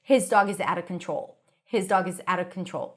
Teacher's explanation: when it's at the beginning of the sentence, sometimes you will hear people pronouncing the full H